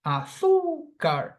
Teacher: This word has 3 syllables, but phonetically, I stress the second syllable before the end. Azúcar. So it's a paroxytone word.